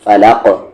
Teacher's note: قلقلہ ہوگا، فلق، فلق نہ کہ فلق، یہ غلط ہے، فلق، آواز کو باؤنس کریں گے، قلقلہ کریں گے